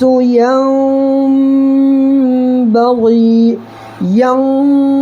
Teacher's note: دیکھیے جب نون ساکن ہے، یہ نون پر ساکن ہے، تو نون ساکن کے بعد اگر یہ با آ جائے تو نون کو میم سے بدل کر غنہ اور اخفا کے ساتھ پڑھیں گے